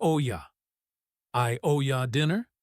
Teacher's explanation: The vowels slide into each other.